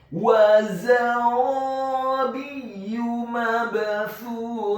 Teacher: Huruf za-nya dibaca tafkhim tebal dengan disis yang tebal fathah 1 harokat. Kemudian huruf ra-nya dibaca tafkhim tebal fathah 2 harokat karena setelahnya ada alif. Huruf ba-nya dibaca tipis kasrah 1 harokat. · Selanjutnya huruf fa yang kedua dibaca tipis tarqiq, lidahnya agak keluar sedikit fathah 1 harokat. Dan di akhir ayat huruf ta marbutohnya diubah menjadi huruf ha yang tafkhim yang tebal dan dibaca sukun